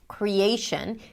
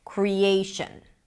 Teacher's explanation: Here we have three different stresses: primary, secondary, and weak, the schwa. The A is the primary stress.